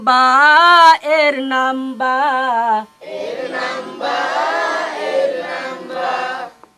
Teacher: তাহলে আমাদের এখন বলতে হবে এভাবে, এক মাথা এক লেজ, যার নিচে এক নুক্তা, দুই ঠোঁটের ভিজা অংশে মিলিয়ে যার উচ্চারণ করতে হয়